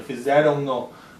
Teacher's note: fizeram no, porque já está nasalizando e nasaliza o no também